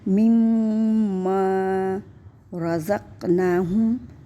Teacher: قاف پہ قلقلہ بھی ہے اور موٹے حروف بھی ہیں تو یہاں پہ قلقلہ کریں گے